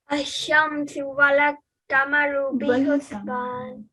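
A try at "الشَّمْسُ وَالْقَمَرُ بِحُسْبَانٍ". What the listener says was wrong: Yeah, so it's not wala again because you have sakoon, so you need to connect and stop. Ash-Shamsu Ash-Shamsu wal-Qamaru bi-Husban.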